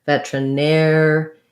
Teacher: So it sounds like vetra, and then our stress is on the air syllable. So even though we have an ER here, it's just like the word where, we need that air diphthong.